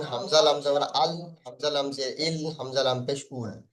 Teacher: জিহ্বার আগার কিনারা এবং সামনের উপরের 8টি দাঁতের গোড়ার সাথে লাগিয়ে উচ্চারিত হয়